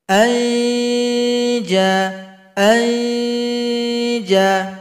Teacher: Kemudian adalah huruf jim di tengah lidah, kita arahkan ke langit-langit. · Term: ikhfa hakiki